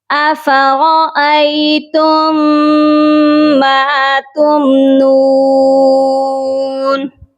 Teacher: میم ساکن کو آپ چھوڑ دیجئے. تا کو میم مشدد کے ساتھ ملائیں گے اور غنہ کریں گے